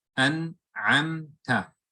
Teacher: you close your lips on the meme, but you don't hold the ghunna, you don't lengthen it. Rather, you close your lips on the meme and then open on the next letter. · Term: Idhar